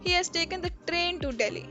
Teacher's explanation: in this we are emphasizing on train that he did not take a plane